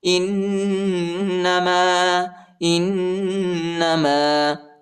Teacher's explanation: حمزہ کو نون کے ساتھ ملائیں گے، نون پر شد آیا ہے اور غنہ بھی ہے